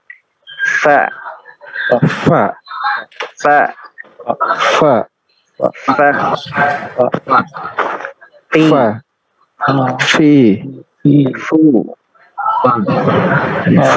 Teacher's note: Ya, gigi atas. Gigi atas kita itu ditaruh di bibir bagian bawah. Itulah huruf fa.